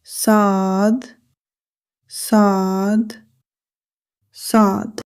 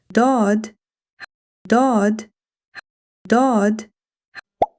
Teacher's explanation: Sad, dad are heavy letters because the sound coming from the mouth are fuller and deeper.